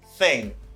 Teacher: Voiceless TH, c'est le TH là, pas une vibration